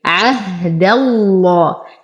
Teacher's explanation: ننتقل من فتحة الدال إلى تجديد اللام المغلظة في اسم الجلالة